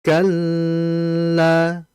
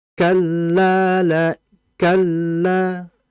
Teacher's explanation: Ya, ini kan disebut dengan lam bertasydid ya. Jadi lam bertasydid cukup dimasukkan saja tanpa berlama-lama di dalamnya.